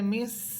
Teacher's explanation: এটা সিন, জিব্বার আগা সামনের নিচের দুই দাঁতের আগার সাথে লাগবে।